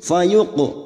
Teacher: qaf sukun yang mati asli di tengah kalimat, qalqalah sugro